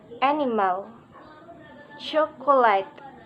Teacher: stress pattern one primary stress is on the first syllable and all other syllable are unstressed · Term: Stress pattern 1